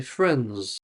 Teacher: So the D disappears. The I disappears and the S sounds more like a zed. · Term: disappearing sounds